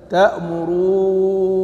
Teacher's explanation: وقراءة الجمهور بنون واحدة مشددة، وتكون الواو قبلها ممدودة مدا لازما